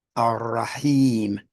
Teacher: 2 beats because of the kasra followed by a ya vowel extension